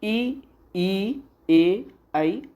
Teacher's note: ई, ए, आई अग्र स्वर हैं। ये जिह्वा के अगले भाग से उच्चारित होते हैं।